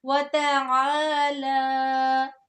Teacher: لام کے اوپر بھی کھڑی زبر ہے اور عین کے بعد بھی الف ہے، دونوں کو لمبا کرنا ہے